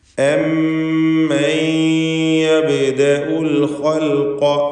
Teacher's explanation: ശദ്ദുള്ള മീമിനെ മണിക്കുക. ശേഷം വന്ന സാക്കിനത നൂനിനെ യായിലേക്ക് ലയിപ്പിച്ച് മണിക്കുക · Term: ഇദ്ഗാം ബിഗുന്ന